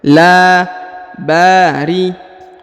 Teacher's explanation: Huruf ba dipanjangkan lagi 2 harokat karena di depannya terdapat alif